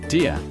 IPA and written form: dɪr (Deer)